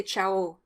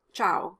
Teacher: the o is stressed at the end of the word as opposed to the ah in italian